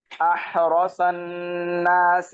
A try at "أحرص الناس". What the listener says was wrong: আহরাসন, ভাই আহরাসন, আপনি মনে হয় এই যে ইন্দুপাক মুসহাফ পরে অভ্যস্ত, যার কারণে এখানে আহরাসুন হয়ে যাচ্ছিল, তাই না? এখানে দেখেন, এটা হচ্ছে হামজাতুল ওয়াসল। এটাকে কি বলে? হামজাতুল ওয়াসল। হ্যাঁ, তো হামজাতুল ওয়াসল চেনার উপায় কি? আলিফের উপরে সদের মাথা, আলিফের উপরে সদের মাথা। হামজাতুল ওয়াসল যদি দুইটা শব্দের মাঝখানে আসে, যেমন এখানে আসছে আহরসন, তখন আমরা পড়বো না।